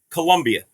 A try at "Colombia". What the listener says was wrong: Okay, it's Colombia with an O. BIA, not a U. Columbia is the university, not Colombia.